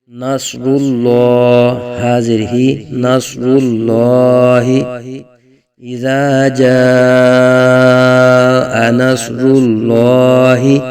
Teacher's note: صاد حروف مستعلی میں سے ہے، صاد بھی پر پڑھا جائے گا۔ تو صاد، را اور لام یہ تینوں حروف پر پڑھے جائیں گے۔